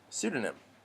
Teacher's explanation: we don't say the P sound that's at the beginning, the first letter of that word. We just say pseudonym, just the S.